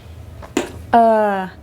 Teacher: Esto es como la schwa, relajada, pero más larga.